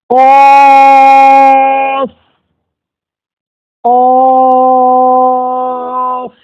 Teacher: قاف کے تعلق سے یہ ہے کہ زبان کی جڑ اس کے مقابل اوپر کا تعلق. جب زبان کی جڑ کو اوپر کے تعلق سے ملیں گے تو قاف نکل جائے گا